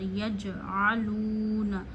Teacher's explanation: عین کو پھر گلے کے درمیان سے پورا پڑھیے، الونا نہیں پڑھنا، حمزہ زبر آ ہوتا ہے، عین زبر آ ہوتا ہے، ان دونوں میں فرق کریے۔